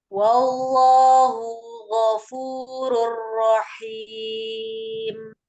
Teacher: Wallahu ada lafuz zalalah dibaca tebal karena sebelumnya fathah. · Ghafurur tanwin ada domah tanwin bertemu dengan ro itu idgham bila gunah dilebur